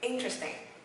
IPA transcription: ˈɪn.trəs.tɪŋ